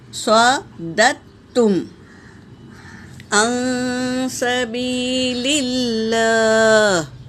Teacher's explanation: یہاں پر میری بہنوں اس طرح ہم پڑھیں گے: صاد زبر صا، دال زبر دال، تا زبر دت۔ یہ سکون والے دال کو نہیں پڑھیں گے بلکہ حرکت والے دال کو تشدید والے تا میں ملائیں گے